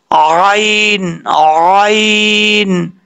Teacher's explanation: फिर ऐसा नहीं करना, आइन को अपने मखरज से अदा करना है। आइन का मखरज है दरमियान, हल्क का दरमियाना हिस्सा।